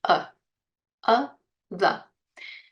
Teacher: it becomes even difficult to hear the difference between 'uh' and 'the'. Why? Because both of them end in the schwa sound.